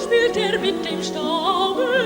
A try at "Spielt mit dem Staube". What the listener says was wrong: Guck, es ist ein Staube. Staube mit dem Staube, not Staube. Simply because it's going up, don't stress it. No? Make it diminuendo.